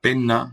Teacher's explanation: conserva la geminada sin palatalizar